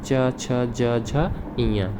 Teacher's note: इसका उच्चारण स्थान होता है तालव्य